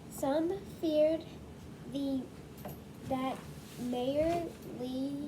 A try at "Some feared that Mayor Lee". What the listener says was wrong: Go slow, go slow. That's a J, not a Y.